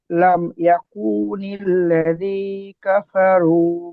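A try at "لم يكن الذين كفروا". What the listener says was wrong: এখানে না ছেড়ে গেছে আপনার, লাযী না।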